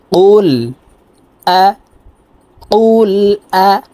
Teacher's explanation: কুল আউযু, কফ লাম পেশ কুল। কফের উচ্চারণ জিহ্বার গোড়া তার বরাবর উপরের তালুর সঙ্গে লাগাইয়া উচ্চারণ করতে হবে। এ কফ জজমলা লামকে ধরবে।